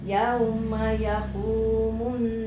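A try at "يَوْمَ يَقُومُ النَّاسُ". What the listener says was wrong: ditahan lagi ya munnya. Ada kurang tahan.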